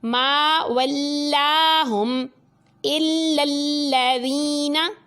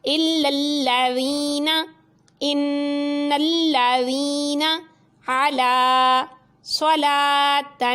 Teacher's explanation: یہ دونوں لام باریک پڑھے جائیں گے، ٹھیک ہے۔ یعنی لام سے پہلے بے شک زبر بھی ہے تو اب یہ لام ویسے ہے، اس لیے اس کو باریک ہی پڑھنا ہے ہر حالت میں.